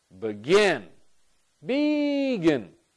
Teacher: this is the stress pattern for begin. The second syllable is stressed. And when the second syllable is stressed, what we're saying is this second syllable is the more important syllable.